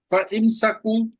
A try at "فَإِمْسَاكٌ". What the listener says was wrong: نہیں نہیں، الف الف بولے نا، فَإِمْسَاكُمْ